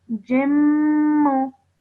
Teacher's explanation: And then you have a jim with a kasra ten underneath it, followed by a meme mushaddad. So just hold that meme sound in your nose for 2 seconds. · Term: nasal sound